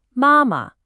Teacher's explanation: High first tone, then neutral.